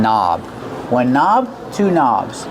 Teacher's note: the word knob has a silent k on it don't pronounce the k start start with the n Sound